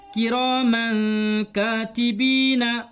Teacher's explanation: اخفا میں سے کاف آیا ہے، اس لیے ہم یہاں پر تنوین کی آواز کو ناک میں چھپا کر غنہ کے ساتھ پڑھیں گے